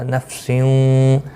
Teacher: یہاں تنوین کے بعد واو آیا ہے، یرملون کا ادغام مع الغنہ ہوگا، یہاں پر بھی غنہ کے ساتھ پڑھیں گے